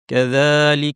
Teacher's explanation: যালের উপর ছোট আলিফ টানতে হবে। যা যা যা, একটু আগে সা যেখান থেকে সেখান থেকে যা, কিন্তু এবার বাতাসটা বন্ধ।